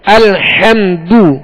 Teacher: لہذا اس بات کا خیال رکھیے کہ الحمد، حمد اور میم پر جزم ہے تو یہاں قلقلہ نہیں کریں گے، سکون کے ساتھ ادا کریں گے، جماؤ کے ساتھ ادا کریں گے. الحمد، دال پر پیش ہے، بغیر کھینچے بغیر جھٹکا دیے معروف پڑھیں گے، ہونٹوں کو گول کر کے. الحمد، الحمد نہیں پڑھیں گے، الحمد نہیں پڑھیں گے، یہ مجھول ہو گیا، بلکہ الحمد یوں پڑھیں گے.